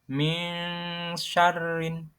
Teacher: Dalam bacaan Al-Quran, ini berarti suara en pada nun sukun atau tanwin dibaca samar di antara idhar dan idhom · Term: ikhfa